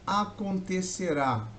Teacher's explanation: oxítona, última sílaba mais forte